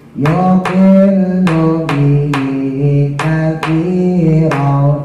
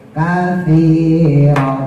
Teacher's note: tanya tipis, ujung lidah keluarin, tempelin ke gigi atas kayak digigit.